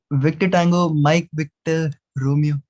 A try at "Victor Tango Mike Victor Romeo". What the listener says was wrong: Yeah, make sure you emphasize more on your last call sign, Mike Victor Romeo.